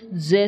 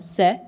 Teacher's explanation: This is the vibration of vocal cords. Therefore the j sound is voiced and s sound is voiceless.